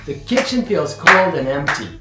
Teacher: So now the first strong beat is kit from kitchen. The second strong beat is coal. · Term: strong beats